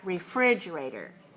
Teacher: 5 syllables, stress the second one.